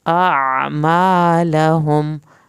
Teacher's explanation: अलिफ और आइन को अलग-अलग अदा करें, मीम के साथ अलिफ है उसको पूरा पढ़ें, और आखिर में लहुम पे मीम नहीं हिलाना और देर भी नहीं लगानी।